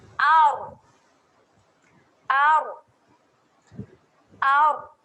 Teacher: angkatkan saja hujung lidah ke gusi atas, ada getaran sedikit. Jadi dia menghasilkan bunyi ar. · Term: bacaan sukun